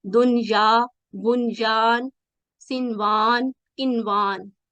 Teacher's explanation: نون ساکن کا بھی ادغام نہیں ہوگا بلکہ ظاہر کر کے پڑھیں گے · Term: اظہار